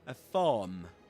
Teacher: in standard Southern British English, a farm, without pronouncing the letter R